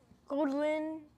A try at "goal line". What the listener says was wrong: No, it's pronounced like I.